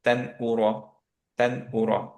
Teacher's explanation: যেহেতু হামজা নুন সুকুনের পরে, এর জন্য আমাদের গুণনা হচ্ছে না, আমাদের ক্লিয়ার হচ্ছে